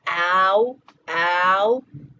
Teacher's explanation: We get to that shout sound and we're keeping it all in the back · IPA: ɑʊ